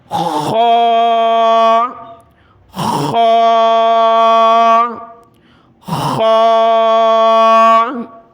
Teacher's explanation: یہ حرف کلرفل اس لیے ہے کہ یہ موٹے حروف میں سے ہے، اس کو موٹا کیا جاتا ہے۔ اس کو بھی ہم نے ہا کی طرح گلے سے نکالنا ہے، جس طرح ہم گلا صاف کرتے ہیں۔